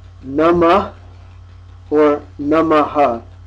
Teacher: Similarly, namaha is na, the dental na, which we don't have in English, and ma, followed by the aspirate, ha.